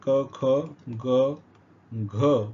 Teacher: कंठ वर्ण ज्यांचा उच्चार कंठातून होतो